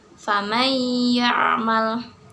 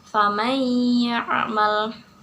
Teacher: Di situ ada nun mati bertemu dengan huruf ya, maka nun mati tidak dibaca dan langsung membaca ke dalam huruf ya disertai dengan gunah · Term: idgham bigunah